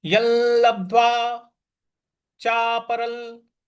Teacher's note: जो य के ऊपर अनुस्वार है उसके आगे ल लिखा हुआ है, तो यहां पे यल यल इस प्रकार से उच्चारण आएगा